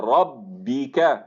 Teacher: را کے اوپر فتحہ ہے، پر ادا ہوگا